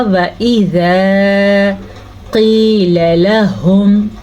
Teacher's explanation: قاف کو موٹا پڑھیں گے کیونکہ یہ قاف ہمیشہ ہی موٹی پڑھی جاتی ہے، لیکن قاف کے بعد جو یا ہے یہ یا مدہ ہے، یا ساکن ہو اور اس سے پہلے حرف کے نیچے زیر ہو تو اسے یا مدہ کہتے ہیں۔